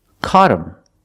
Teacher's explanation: the H is silent. So you hear caught him.